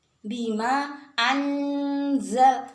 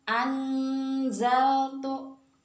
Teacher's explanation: makhrajnya za itu kan ujung lidah dengan pangkal gigi seri atas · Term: ikhfa